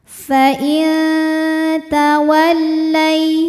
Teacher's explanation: Ada hukum ikhfa aqrab karena nun sukun menghadapi huruf ta. Maka bunyi nun disamarkan, siap-siap menuju ta disertai bunyi dengungan. Ya, dengungnya sedikit, samarnya banyak.